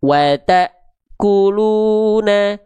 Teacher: Kenapa huruf taknya terhentak? Karena ketemu hamzah sukun.